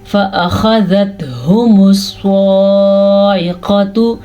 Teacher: صاد کو ہم پر پڑھیں گے کیونکہ صاد حروف مستعلیہ میں سے ہے. عین کے مخرج کا ہم خاص دھیان دیں گے کیونکہ یہ عین ہے, حمزہ نہیں.